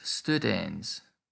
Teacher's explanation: the vowel before the ns is always long in this declension